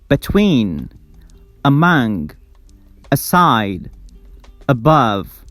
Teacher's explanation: the first syllable is relaxed, but the second syllable is stressed